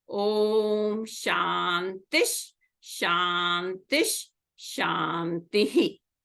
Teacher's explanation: the visarga is replaced by a Shakara